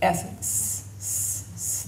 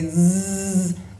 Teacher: S is voiceless. It doesn't, your vocal folds don't vibrate, but if you say zzz, then it does. Okay, zzz.